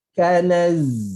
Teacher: Okey, dan kemudian kita sampai pada zai, ingat balik makhraj dia dekat mana, kemudian zai tebal ke nipis, dan kemudian zai ada rakhawah, ada lepasan suara.